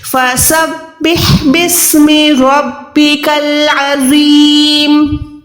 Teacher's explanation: اس کے بعد آگے دیکھیں رو یا زیر زی, پھر بھی میں زو کو موٹا ادا کر رہی ہوں کیونکہ یہ حروف مستعلیہ میں آتا ہے